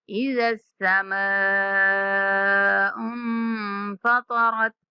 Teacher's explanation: یہاں نون پہ اخفا کرنا ہے، طا اور را کو پر پڑھنا ہے۔